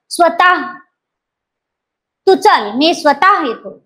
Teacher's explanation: ह या वर्णाला हिसडा दिल्यासारखा उच्चार हिसडा म्हणजे झटका सौम्य झटका एकदम वर जायचा नाही सौम्य स्वतः बरोबर म्हणायचा निसटता स्वतः तू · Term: विसर्ग